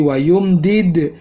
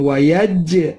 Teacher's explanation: jim mati juga dibaca pantul seperti dal mati dipantul. Kalau dal tadi wayumdid, kalau ini wayaj ya, wayaj qalqalah.